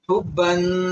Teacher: اس کے آخر میں جو تنوین ہے اس کو ہم غنہ کے ساتھ پڑھیں گے، حبن، اس طرح ناک کے اندر تھوڑا سا دبا کر اسے پڑھا جائے گا